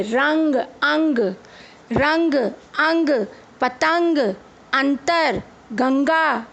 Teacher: जब हम इन शब्दों का उच्चारण कर रहे हैं तो जो आवाज है वह हमारी नाक से बाहर आ रही है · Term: अनुस्वार